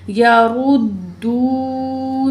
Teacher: दाल पेश वाव दू, वाव साकिन पिछले अल्फाज पे पेश है, वाव मद है, 2 पॉइंट खींच के पढ़ेंगे।